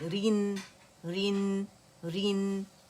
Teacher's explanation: رین نہیں بولیں گے اسے, ٹھیک ہے, اور نہ قلقلہ کریں گے. نون پہ ہماری آواز ٹک جائے گی